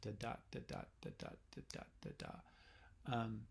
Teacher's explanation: that's an unstressed syllable followed by a stressed syllable and it's very common and it's what gives us the flow · Poetic feet have different types of beats, and the most important one for us to know in English is the most common one is the iamb, so IAMB, and that's an unstressed syllable followed by a stressed syllable